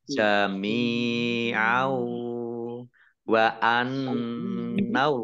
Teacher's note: nun tasdid dibaca gunnah atau mendengung, ditahan dua harokat. Annaullaha, Allahnya dibaca tebal karena harokat di depannya fathah.